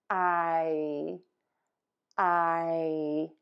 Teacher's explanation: back of the tongue is pulled high up. Move to a smile and a high, flat tongue.